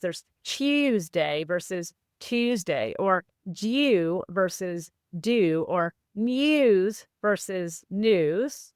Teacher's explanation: And that's because historically, after the sounds like N or T or D and before an U vowel, there was a Y sound